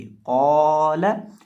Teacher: क़ाफ और अलिफ दोनों को मुस्तालिया यानी मोटा करके पढ़ेंगे। क़ाला, लेकिन लाम को बरीक पढ़ेंगे।